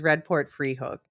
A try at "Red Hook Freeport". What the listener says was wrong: Red Hook Freeport, you mean? No, you said Red Free Hook.